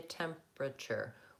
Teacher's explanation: Temperature, we have a tendency that will have a pattern of people might think it has temperature, all of those syllables, but we really say temperature. We reduce those middle two syllables and we just do 3 syllables there.